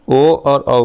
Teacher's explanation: ओ और औ का कंठ का प्रयोग भी किया जाएगा और ओंठ का प्रयोग किया जाएगा, इसलिए इसको कहते हैं कंठोष्ठ।